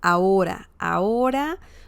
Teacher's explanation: the H sound is silent in Spanish